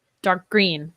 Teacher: really saying that g and linking my similar consonant sounds